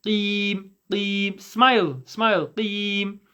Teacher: The way that you pray the qaf is the back of the tongue touches the soft portion at the back of your mouth to make it a qaf sound